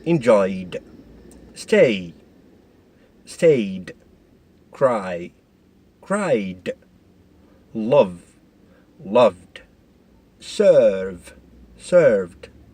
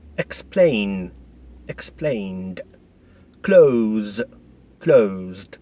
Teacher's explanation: all the sounds which end these verbs are voiced sound.